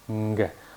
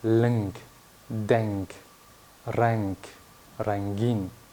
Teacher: Такой носовой звук нг. Не сильно носовой, но такое сочетание звука нг. Например, в таких словах, как лнг, денг, ранг, рангин.